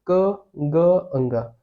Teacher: आपके मुंह से ज्यादा हवा नहीं निकली, ये अल्प प्राण है। वैसे ही ख और घ बोलिए, ख और घ बोलेंगे तो ज्यादा हवा निकलेगी।